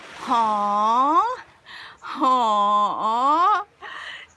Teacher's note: you need to rise your tone and then go down a little bit, like haw. We compare this letter with an H, but it's not like exactly the way it's pronounced.